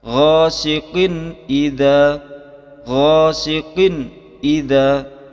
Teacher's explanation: Lafaz qin itu dibaca jelas dan tidak boleh ditahan atau didengungkan. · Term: izhar